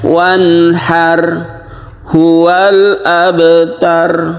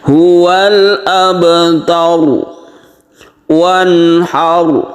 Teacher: Jangan ditipiskan tapi ditebalkan. Bibir kita agak mencucu sedikit. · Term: ro yang tebal